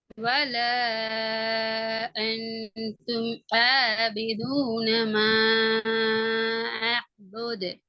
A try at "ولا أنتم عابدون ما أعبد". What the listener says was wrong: ஆபிதுனா வருது. அதே மாதிரி தாலையும் கலக்கணும். பலகு என்று காஃப கலக்கினது போல